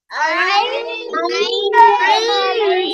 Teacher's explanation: গলাটা চেপে উচ্চারণ হবে